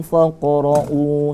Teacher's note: karena apa ada kok merupakan huruf Qalqalah kalau dia posisinya disukunkan Qolqolah Sugro karena berada di tengah kata seperti itu pantulan dikit aja